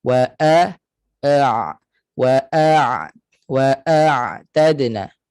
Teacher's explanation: pada Ain dia ada sifat tawassub maknanya suara itu kena terlepas sedikit wa tak boleh kita sekat suara pada Ain mati wa t · Hamzah makhrajnya di Pangkal tekak Ain makhrajnya di tengah tekak